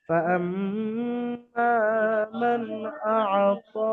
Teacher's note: হ্যাঁ, তো নুন সাকিনের পরে হরফে হালকি থেকে হামজা এসছে, এই জাহারে হালকির কায়দা বিনা গুণনায় নুন সাকিনকে তাড়াতাড়ি পড়তে হবে